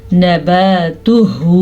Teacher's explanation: नबातुहू, हा के मखरज का ध्यान रखना है, ये हा सीने में से निकलता है